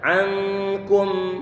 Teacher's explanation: Kafnya dia didommahkan. Pengucapannya bibir perlu untuk dimonyongkan.